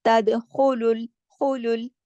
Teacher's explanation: लेकिन लाम मोटा नहीं है, सिर्फ खा को मोटा पढ़ा जाएगा।